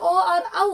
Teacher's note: जो ओ और औ है वो कंठ और ओष्ठ से बोला जाता है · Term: कंठोष्ठम